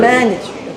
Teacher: I put the stress on man.